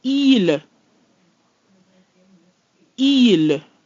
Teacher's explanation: Il. So we have our letter I, which is E, followed by a distinctly pronounced L. That gives us il.